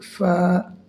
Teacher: اس فا کو ہم ایسے پڑھیں گے جیسے اگر ہاتھ میں آٹا رکھ دیا جائے، آٹا اڑ جائے